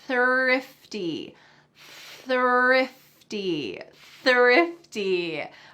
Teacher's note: my tongue is between my teeth and there's a stream of air coming out